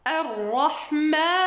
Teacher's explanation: Et le mim, comme on a dit, c'est une lettre qui a une partie qui vient de la bouche et une partie qui vient du khayshum ou bien du nez. Donc faites très attention à ce que la prolongation ne part pas vers le khayshum. Donc on ne dit pas ar-rahman khata, ar-rahman, rien du nez. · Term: prolongation tabi'i